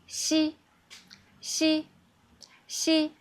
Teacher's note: it has continuous air and your tongue is very flat